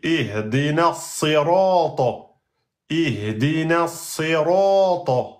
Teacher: Donc vous devez même le sad avec kasra, vous devez l'emphatiser.